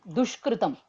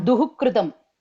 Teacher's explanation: the visarga here will become shakara